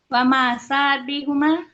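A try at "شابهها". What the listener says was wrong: syabahaha syabahaha, nggak ada mim.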